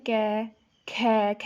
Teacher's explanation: ख को बोलने में ज़्यादा वायु निकल रही है ना, तो इसलिए ये महाप्राण में आता है।